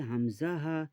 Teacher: হালাকের বা কন্ঠনালীর শুরু হতে উচ্চারিত হয় হামজাহা।